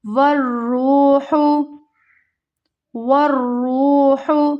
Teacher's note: را یہاں پر موٹا پڑھا جائے گا کیونکہ را کے اوپر پیش کی حرکت ہے۔ را واو پیش رو، حروف مد، اسے ہمیں کھینچنا ہے، ہا کو ہمیں بالکل بھی لمبا نہیں کرنا۔